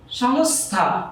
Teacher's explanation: এই দন্ত স থ এর সাথে যুক্ত, যার কারণে দন্ত স এর উচ্চারণ দন্ত স রয়ে গেল